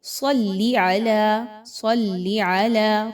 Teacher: اب یہاں پر بہت سے لوگ غلطی کرتے ہیں، اس کو صاد کو سین کی آواز میں پڑھتے ہیں، اللہم صلی علی، صلی نہیں ہے بلکہ صلی علی، صلی علی، صاد کو خوب موٹا پڑھائی جاتا ہے، حروف مستعلیہ میں سے ہے